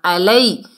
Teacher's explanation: یا ساکن سے پہلے زبر ہے، یا لین ہے، نرمی سے پڑھیں گے